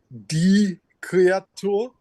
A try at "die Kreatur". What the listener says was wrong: Stretch the U a little bit. Kreatur.